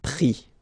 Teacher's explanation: you don't pronounce the final S